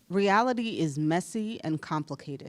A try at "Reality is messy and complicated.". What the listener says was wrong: Say it again, because that part right there, you kind of mumbled a little bit because you ate a little something maybe you were feeling kind of sexy.